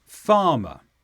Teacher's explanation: And in the word farmer, the stress is on the first sound, farmer.